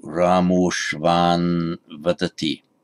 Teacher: what happens to a followed by a word beginning with a short a. The whole lot just becomes o.